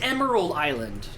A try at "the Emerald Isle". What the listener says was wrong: The Emerald Isle, not island. That's Isle.